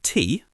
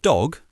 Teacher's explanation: T as in T voiceless, D as in dog, voiced. Your tongue position for both is pretty similar, just behind your teeth, but the voicing is the key difference.